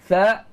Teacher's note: dia bersifat dengan sifat hams. Berangin. Ada angin. Tha. Kedua, dia bersifat dengan sifat rokhawah.